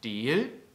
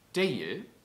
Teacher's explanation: Das E und das Ei, die klingen nicht so verschieden in unserem Platt.